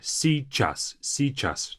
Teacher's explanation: You can just simply say сейчас, сейчас, but you have to kind of add this little y there.